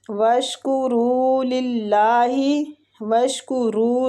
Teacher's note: واشکروا رو کو کھینچیں گے اور پور پڑیں گے